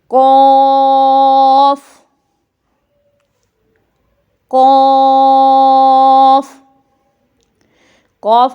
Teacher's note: جو زبان کی جڑ ہے وہ اوپر کے تالو سے جب ٹکر کھاتی ہے تو وہاں سے ادا ہوتا ہے۔ یہ قاف گرین کلر کا نقطوں والا قاف، اس کو ہم عام لینگویج میں، عام زبان میں بڑا قاف، موٹا قاف بھی بولتے ہیں۔